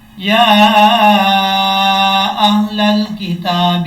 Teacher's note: یا کے اوپر کھڑا زبر بھی ہے اور مد بھی ہے۔ اس کو لمبا کریں گے 2 سے 2.5 الف کے برابر